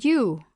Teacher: the dip thong U is made up of the Glide I and the single vowel U